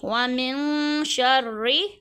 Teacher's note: زبر ہے شین کے اوپر اور را کے نیچے زیر اور را پہ تشدید ہے، را کو ہم 2 دفعہ پڑھیں گے، ساتھ میں باریک بھی پڑھیں گے · یہاں پہ ہم غنہ کر کے پڑھیں گے، ایک انگلی کی مقدار کھینچیں گے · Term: اخفا